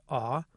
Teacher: it is considered to be a mid-back lax vowel, and that it is produced with lip rounding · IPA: [ɔ]